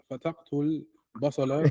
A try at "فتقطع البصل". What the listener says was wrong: تقتل. She kills it. There's a تقتل. تقطع.